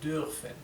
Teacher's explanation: esta R es un poco imperceptible · es un sonido intermedio entre una I y una U. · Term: U con la umlaut